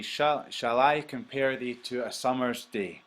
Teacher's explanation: you've got an unstressed and a stressed, unstressed stressed, unstressed stressed, unstressed stressed, unstressed stressed. That means it's an I am.